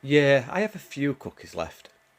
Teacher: The falling tone totally flips the meaning, even though they use the positive phrase. The tone makes it negative.